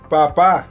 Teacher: Un sonido oclusivo en donde el aire sale disparado luego de que separamos ambos labios.